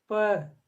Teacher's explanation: प कहेंगे तो ओष्ठ जो है आपस में मिलेगी फिर खुलेगी।